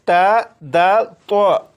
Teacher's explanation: زبان کی نوک جب اوپر یعنی سامنے والے 2 دانتوں کی جڑ سے لگے تو اس سے تا دال تو ادا ہوتے ہیں